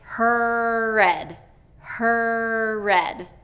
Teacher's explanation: is getting reduced and you're dropping that R vowel okay so connect her red her red to get that strong R in there